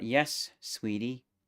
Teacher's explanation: Same melodic pitch in the first two syllables of the phrase, but since it's a question, the TIE goes higher.